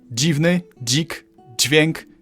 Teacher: Like before, we had a z turning into zi, and now we merge that with d to make dzi.